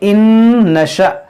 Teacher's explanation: नून साकिन के बाद नून है, यहाँ पर भी इदगाम होगा